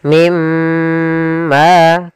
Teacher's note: cara membacanya masukkan nunnya ke huruf mim dan kemudian ditahan dengan gunah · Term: idgham bi gunnah